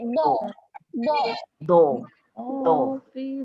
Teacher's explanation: Tebalkan bunyi huruf dad, jangan bunyi da. Kita muncung sikit